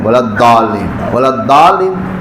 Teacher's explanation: لیکن زبان کے جو سائڈ ہے کنارہ ہے وہاں سے یہ ادا ہوتا ہے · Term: ضاد